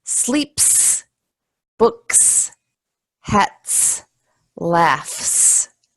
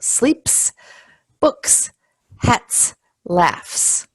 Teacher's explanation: when that final sound is is a voiceless sound then we just pronounce the SS but if that final sound is a voiced sound then the